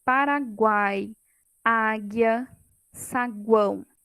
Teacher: uma vogal e duas semivogais na mesma sílaba. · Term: Tritongo